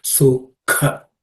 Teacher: The K is the second letter in the K varga, so it has to be a K class of consonant, so it has to be aspirated.